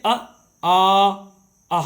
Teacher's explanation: स्वरों का उच्चारण स्थान हम देखते हैं तो स्वर के भी मुख्य द्वार में, मुख में कई स्थान होते हैं। जैसे कंठ, कंठ से अ, आ, आहा निकलता है।